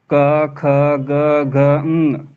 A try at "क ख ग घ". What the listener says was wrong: आ क्यों ला रहे हैं? काम में तो आ नहीं ला रहे। काहे लाना है? पहले थोड़ी लाना है, बाद में केवल उच्चारण के लिए लाया गया है।